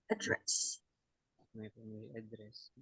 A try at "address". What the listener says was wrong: A-nya dibaca huruf E. Address.